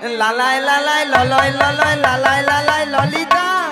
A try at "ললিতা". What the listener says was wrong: বলে লালাই লালাই ললয় ললয় লালাই লালাই ললিতা মাসি ওটা লালাই লালাইও নয় আর ললয় ললয়ও নয় বলো ললিতা বলো ললিতা